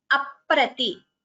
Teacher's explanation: There is a second P heard, Dvitvam there.